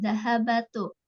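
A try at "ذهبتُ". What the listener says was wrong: Nah, di sini tuh bukan zahabatu ya Bu ya. Jadi disukunkan. Zahabtu. dahabtu.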